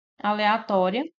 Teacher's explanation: é acentuada e no item D aleatória nós temos al ória a sílaba mais forte é o to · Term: paroxítona